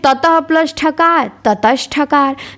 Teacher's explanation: विसर्ग के बाद ठ आ गया तो वो भी मूर्धन्य स में बदल गया